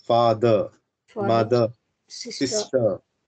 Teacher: the ending of R will be silent